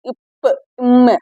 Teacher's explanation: மேலிதலும் கீழிதலும் பொருந்துவதால் பிறப்பது